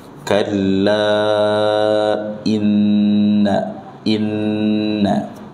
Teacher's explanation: Kemudian nun bertasydid dibaca dengan gunnah ya, dihafalkan. Nun bertasydid dibaca dengan gunnah, ditahan ya, minimal dua harokat.